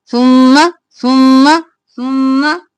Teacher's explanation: जहां पे भी सुम्मा आएगा जल्दी से और गुन्ना करते हुए पढ़ेंगे